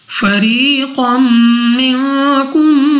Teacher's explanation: قاف کے اوپر 2 زبر اور 2 زبر کے بعد میم حروف یرملون میں سے ہے، ادغام کا قاعدہ ہے غنہ کر کے پڑھیں گے